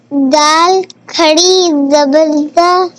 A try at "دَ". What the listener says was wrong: کھڑی کہاں سے ہو گیا؟ اوپر ہے نا دال.